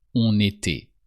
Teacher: Don't forget to pronounce the N of on when the following word starts with a vowel